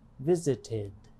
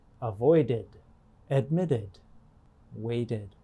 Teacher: of a verb is spelled with a d or a t the e d past tense ending is often pronounced as id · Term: third way